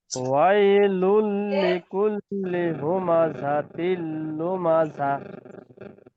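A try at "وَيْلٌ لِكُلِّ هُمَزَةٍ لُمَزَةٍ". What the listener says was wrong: ঠিক আছে মাশাআল্লাহ,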